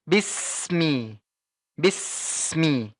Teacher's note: ketika sudah ditekan Maka langsung kamu oper ke huruf m-ya Bismi jadi tidak ada jeda sama sekali tidak seperti ini ya bis Mi bis putus Mi tidak boleh